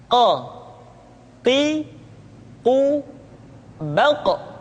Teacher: huruf qaf diucapkan dengan cara menyentuhkan pangkal lidah kita dengan langit-langit bagian belakang Q qu ba diucapkan dengan suara yang tebal dan dalam posisi